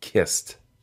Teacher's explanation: the ed ending for the past tense or past participle for kiss makes a t sound the simple form is kiss the past tense is kist and